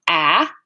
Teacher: so it's low it's front it's unrounded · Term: a vowel